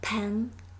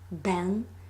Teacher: the phoneme p is opposed to the phoneme b due to the presence and absence of voice. It is the only distinctive feature of this minimal pair.